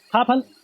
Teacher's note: ओष्ठ है, महाप्राण है और अघोष है।